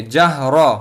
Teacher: یہاں پر را کے اوپر زبر آیا ہے، اس وجہ سے یہاں را کو پر پڑھیں گے